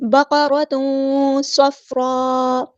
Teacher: تنوین کے اندر نون چھپا ہوتا ہے تو اس کی آواز کو جب ہم چھپائیں گے تو ایک الف کے برابر رکیں گے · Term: اخفا